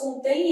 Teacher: E na hora que eu faço contém, esse M vai ter som semivocálico. Então, vai ter som de I. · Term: ditongo fonético decrescente